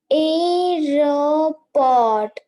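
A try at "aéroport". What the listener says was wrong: A T will be silent. It is not aeroport. T will be silent. Aeroport.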